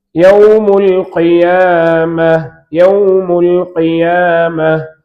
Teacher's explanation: யா நாவின் நடுப்பகுதி வாயின் மேல் பகுதியை நோக்கி உயரும் பொழுது யா உண்டாகும்.